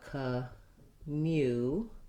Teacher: this u is one of our letter u's that says more than just the oo vowel it also has the glide ya